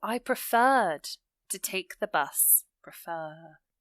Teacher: so the stress is on the r section the second syllable